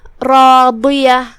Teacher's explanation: کلمت راضیہ یہاں بھی را کا حکم ہے تفخیم کیونکہ اس پہ زبر ہے تو ہم را کو بھاری آواز میں پڑھیں گے · یہاں حرف الضاد ہے. ضاد کی ادائیگی زبان کے کروٹ اور اوپر کے داڑھوں کی جڑ سے ہے. ضاد حروف التفخیم میں سے بھی ہے تو ہم اسے بھاری آواز میں ادا کریں گے.